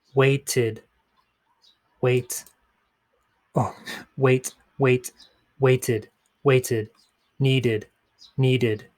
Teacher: We add a sound, ud. This happens after t sound and d sound.